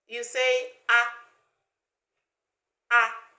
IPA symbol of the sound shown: ʌ